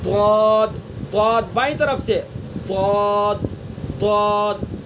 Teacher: تو اس لیے بائیں طرف سے نکالے پہلے، یعنی زبان کی بائیں کروٹ کو بائیں طرف لگانا ہے اور ادا کریں گے ضاد، ضاد، بائیں طرف سے ضاد، ضاد۔